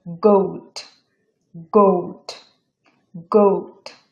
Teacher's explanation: খ এন্ড গ একদম ভিতর থেকে উচ্চারিত হবে